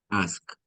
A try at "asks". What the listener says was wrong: Asks. Yeah, there has to be an S at the end. Asks.